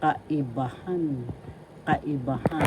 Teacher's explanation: The fourth syllable has the accent, so you pronounce this as because kaibahan.